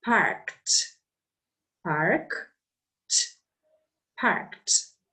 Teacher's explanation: when you add Ed this Ed has the T sound